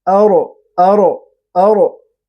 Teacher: حمزہ باریک ہے اور را پر ہے کیونکہ را ساکن اس سے پہلے زبر ہے